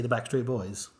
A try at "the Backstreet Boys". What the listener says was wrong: Why do you emphasise it that way? It's the Backstreet Boys, not the Backstreet Boy. How did you say it again? No, you didn't say it like that. You emphasised it really weird. Yeah, like the Backstreet Boys. It's the Backstreet Boys.